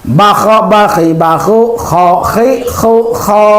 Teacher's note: Kho dari tenggorokan bagian atas.